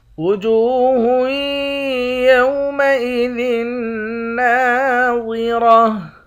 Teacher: وجوہ یومئذ ناظرہ، جیم کو واو کے ساتھ ملا کر ایک الف کی مقدار کھینچیں گے، ہا کو یا کے ساتھ ملا کر یہاں پر ادغام مع الغنہ کریں گے، یعنی یہاں پر غنے کے ساتھ پڑھیں گے۔ · خا اور را ان دونوں حرف کو بھی موٹا پڑھیں گے، آخر میں گولتا ہے، گولتا پر جب وقف کرتے ہیں تو گولتا ہاں بن جاتی ہے · ضاد اور را ان دونوں حروف کو موٹا پڑھیں گے